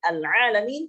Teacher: Al-Alamin kita membacanya sebagai ain di situ dirubah menjadi hamzah. Al-Alamin akan merubah makna, dan ini akan merusak makna. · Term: lahnul jadi